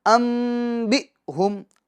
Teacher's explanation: حمزہ ساکنہ ہے تو اس کو ہم جھٹکا دے کے پڑھیں گے،